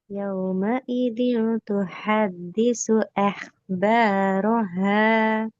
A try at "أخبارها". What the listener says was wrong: இந்த ஹா புறப்படாது. ஹே. أخبارها.